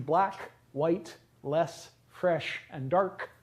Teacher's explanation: black, white, and dark end with voiceless stops, and less and fresh end with voiceless fricatives